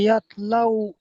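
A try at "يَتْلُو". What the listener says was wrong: ইয়াত লাও না, লামের পেশ, পেশ আছে।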